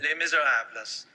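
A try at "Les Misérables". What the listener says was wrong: By the way, that's also a mispronunciation. You don't pronounce the S? Les Miserables. Les Miserables. Les Miserables.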